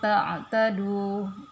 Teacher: Ta'tadu, ya, sama, nun sukun ketemu dengan ta itu namanya ikhfa, dibaca samar-samar.